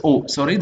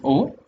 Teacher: rounded, and it is the back of the tongue that is involved, and it lies close to the open vowel position